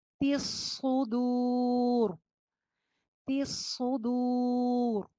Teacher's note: تا کی زیر کو صاد سے جوڑیں گے، صاد موٹا پڑا جائے گا.